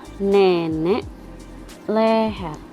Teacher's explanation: vokal E madia bawah depan